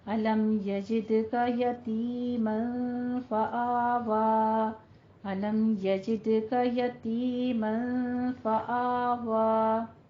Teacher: فآوا نہیں کہنا ہے، فآوا، دونوں فتح قائمہ ہیں، ان کو 2 حرکتوں برابر لمبا کر کے پڑھنا ہے